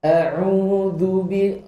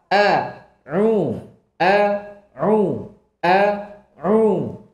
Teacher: Maka isti'adah lihat dimulai dengan hamzah kuat. Bukan bukan lemes enggak. Dia kuat karena kedua sisi makharij merapat dengan kuat.